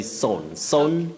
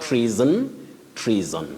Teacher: The unvoiced sound s should not be used. That letter S takes the voiced sound Z.